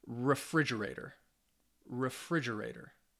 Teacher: can you hear that second syllable get a little more a little more emphasis · so refrigerator has five syllables and the stress is on the second syllable